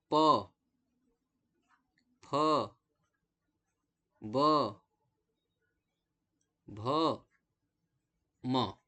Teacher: तो ओष्ठ में ओठ का स्पर्श होता है। ओठ में आप देखेंगे कि आपके दोनों ओठ आपस में स्पर्श करेंगे।